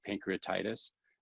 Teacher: when we say pancreatitis that that emphasis is on the tie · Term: primary accent